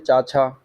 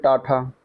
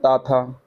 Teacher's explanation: व्यंजन वर्ग में अगर देखा जाए तो पहला और दूसरा व्यंजन जो होता है वो अघोष कहा जाता है